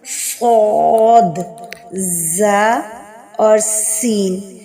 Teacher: ان کو ادا کرتے وقت سیٹی کی سی آواز نکلتی ہے، اور یہ صرف حروف ہجا میں صرف انہی 3 حروف میں پائی جاتی ہے۔ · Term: حروف صفیریہ